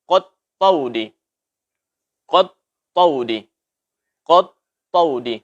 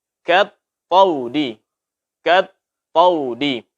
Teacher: Kemudian juga kesalahan berikutnya, jangan kita tebalkan suara huruf kaf ini. Terutama ketika berdampingan dengan huruf tebal dan berdampingan dengan alif. Tidak boleh kita ucapkan seperti ini, umpamanya kat taudi. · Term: tipis